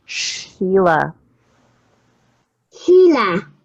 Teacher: your tongue is curled back